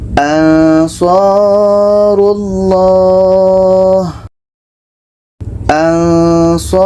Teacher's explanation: Ketika sebut huruf nun, kita sudah merasakan huruf sa. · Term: ikhfa hakiki